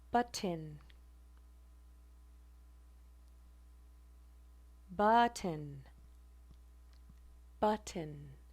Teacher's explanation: the glottal stop is produced when the release of the stop t is at the point of the glottis. So instead of releasing the stop at the alveolar ridge, t, we're releasing it at the glottis.